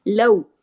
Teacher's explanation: लौ, ये लौ वावी लीन है, वाव खुद साकिन है और उससे पहले जबर है, तो इसकी आवाज में नरमी से मोड़ पैदा होगा, इसी को कहते हैं लीन।